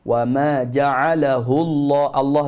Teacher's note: Lam pada lafzul jalalah itu dibaca dengan taghlid tebal dan dipanjang dua harakat. Illa tekan pada huruf lam dengan cara letak pada makhraj huruf lam hujung tepi lidah, jangan guna hujung lidah.